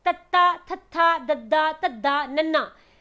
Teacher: ਦੇਖੋ ਤੁਸੀਂ ਸਾਰਿਆਂ ਨੇ ਜਦੋਂ ਬੋਲਿਆ ਤਾਂ ਤੁਹਾਡੇ ਦੰਦ ਦੇ ਨਾਲ ਥੋੜੀ ਬਹੁਤ ਜੀਭ ਜ਼ਰੂਰ ਟੱਚ ਹੋਈ ਹੈ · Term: ਦੰਤੀ ਵਿਅੰਜਨ